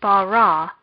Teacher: this word does not have any particular marks so the last syllable of bara would be stressed